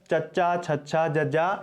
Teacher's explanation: ਇਹਨਾਂ ਦੇ ਉਚਾਰਨ ਵੇਲੇ ਸਾਡੀ ਜੀਭ ਹੈ ਜਿਹੜੀ ਉਹ ਸਾਡੇ ਤਾਲਵੇ ਨੂੰ ਛੂੰਹਦੀ ਹੈ, ਉਹਨੂੰ ਸਪਰਸ਼ ਕਰਦੀ ਹੈ।